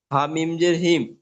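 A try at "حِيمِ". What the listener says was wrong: হামিম জের কথা দেখতে পাচ্ছেন, এখানে তো পেশ আছে।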